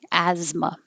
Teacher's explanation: It looks crazy with an S and a TH, but it's really just a Z.